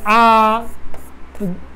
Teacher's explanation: अ के तुलना में आ में दुगुना समय देना पड़ रहा है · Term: दीर्घ स्वर